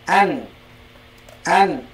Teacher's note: Nun itu di lidah dan juga hidung mim juga demikian · Nun dan mim itu pasti masuk hidung